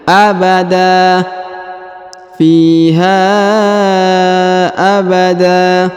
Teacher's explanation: Huruf da dipanjangkan 2 harokat ya. Tanwinnya, annya menjadi hilang